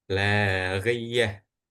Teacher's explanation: tak marbutoh yang di belakang ini bakal dibacanya itu seperti huruf H.